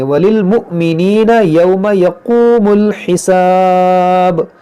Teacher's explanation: حمزہ ساکنہ ہے، اس کو جھٹکے سے پڑھیں گے